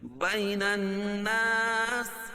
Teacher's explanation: وقف کی صورت میں سین کے نیچے جو زیر ہے اس کو جزم سے بدل دیں گے، بین الناس، اور یہ مد عارض وقفی ہوگا۔